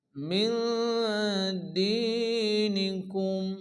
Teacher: দাল ইয়াজের দি এর মধ্যে এক আলিফ টান।